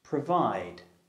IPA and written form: prəˈvaɪd (provide)